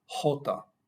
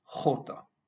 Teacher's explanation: la mayoría de los hispanohablantes dicen J, profundo, de la garganta, nosotros en la parte más superior